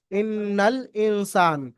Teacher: নুনকে এক আলিফ পরিমাণ গুন্না সহ পড়তে হবে